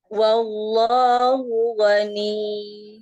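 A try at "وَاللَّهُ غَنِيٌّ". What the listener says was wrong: ini kepanjangan ininya kepanjangan n i y i tapi enggak boleh panjang tekan yang keras G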